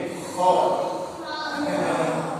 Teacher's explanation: kalau yang kho di tenggorok sama, seperti kayak orang ngorok.